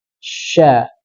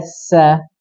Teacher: udara pada seluruh mulut ketika mengucapkan hurufnya yaitu huruf syin saja nafasnya menyebar ke seluruh mulutya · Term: tafasyi